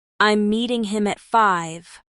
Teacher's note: Down talk falls in pitch and is used in statements.